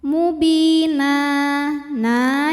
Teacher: Sukun didahului baris kasrah maka panjang bnya dua harakat Mubina na jika berhenti hukumnya Mad iwad sebab ada baris tanwin fathah yang kita wakafkan cara bacanya panjang dua harakat